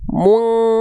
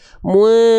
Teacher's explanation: tapi dibacanya cukup disamarkan dengungnya nggak terlalu kuat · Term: menjauhi eng